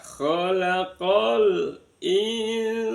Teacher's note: ada nun sukun bertemu dengan sin dibaca ikhfa hakiki in disamarkan bunyi nun sama sin. Ditaruh di tengah-tengah antara huruf nun sama sin.